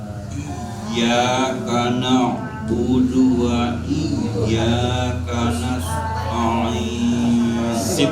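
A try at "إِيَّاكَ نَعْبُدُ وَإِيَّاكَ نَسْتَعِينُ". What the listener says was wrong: Sinnya terlalu tebal. Sinnya terlalu tebal, itu tengah lidahnya kena. Karena di ujung lidah.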